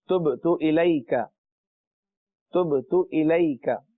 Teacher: تبت با پر قلقلہ ہے اس لیے آواز لوٹ رہی ہے